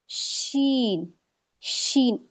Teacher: अगर हम पीछे से इसमें जो हवा का प्रेशर आता है, अगर वो नहीं निकलेगा तो ये अदा नहीं हो सकता। तो इसमें हमारा जो जबान का बीज है वो पूरा ताल्लु को नहीं चिपकता, गैप रहता है, थोड़ा सा गैप रहेगा, जिसमें ये पीछे से जो हमारी हवा आती है पास होती है तो वो बाहर निकल जाती है, तब ये शीन अदा होता है।